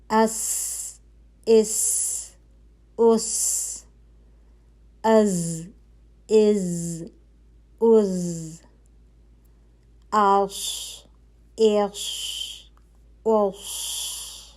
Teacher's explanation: تینوں حروف ایک ہی مخرج سے ادا ہو رہے ہیں، لیکن ان کی سیٹی کی آواز جو ہے وہ فرق سنائی دے رہی ہے · مخرج ایک ہی ہوگا، سیٹی کی آواز تھوڑی سی فرق ہوگی. حروف جو زا اور سین ہیں ان میں سیٹی کی آواز جو ہے وہ باریک ہوگی. زا میں جو ہے وہ تھوڑا بزنگ بھی آئے گی، لیکن سین میں اس اور زا میں از.